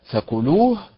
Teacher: النبر في فكلوه على حركه اللام